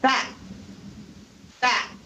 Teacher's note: The second T is not only not aspirated, but also unreleased. Unreleased because the tongue touches the alveolar ridge, which we talked about last time, but it doesn't release. · So the tongue stays behind the teeth, touching the alveolar ridge, and is not released to cause an explosion.